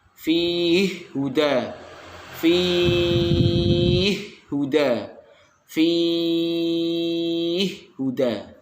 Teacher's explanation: Pertama terdapat pada lafal fihi huda, yaitu oleh As-Susi diidghamkan dengan idgham kabir panjang 2, 4 atau 6 harokat